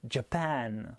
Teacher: faudra insister et appuyer pour le japon par exemple sachant que c'est la dernière syllabe la deuxième qui est accentuée